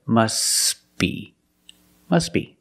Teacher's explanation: The T is silent because it's between consonants when you link the words. Must be. Link the sounds s with a b. · Link the sounds s with a b. S, b. Together, must be.